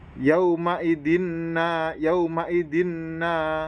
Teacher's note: Yauma yang berbaris fathah bertemu dengan wawu sukun maka itu disebut huruf len dan membacanya itu harus lembut